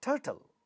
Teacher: ta at the other syllable which is not stressed is not getting aspirated.